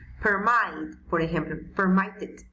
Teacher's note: la mayor fuerza de voz sea en la segunda sílaba, o sea, en la mid.